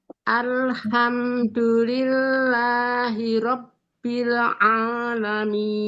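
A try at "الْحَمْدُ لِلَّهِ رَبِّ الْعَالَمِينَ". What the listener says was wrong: Nah, ini dua lamnya. Ada bil sama al. Nah, jangan mantul. Jangan mantul. Nah, jangan mantul. Masih mantul tadi ya.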